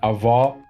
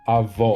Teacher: the distinction between the open and the closed vowels